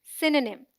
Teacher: SYN sounds like sin, as in win, and is the stressed syllable. The O sound is dropped.